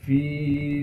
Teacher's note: फ़ा को या मद्दा से मिला देंगे। या मद्दा होने की वजह से फ़ा को 1 अलिफ के मिकदार खींचेंगे।